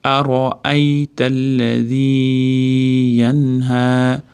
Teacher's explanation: Yanha nunni aniq bildiramiz, orqasida ha kelyapti. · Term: izhor qoidasi